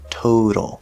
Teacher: the word total, that first syllable is stressed, so we have a nice strong T, Total. But then in the middle, we have the letter T at the start of an unstressed syllable, so it's going to be a flapped D sound